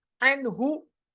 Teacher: नून साकिन के बाद गोल हा, यहाँ पर नून पे इजहार होगा, इजहार हलकी